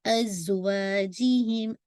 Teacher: ازا پہ آپ کو پتہ ہے تھوڑی سی وسلنگ ساؤنڈ ہے. وا کو آپ نے انشاءاللہ 2 کاؤنٹ اسٹریچ کرنا ہے.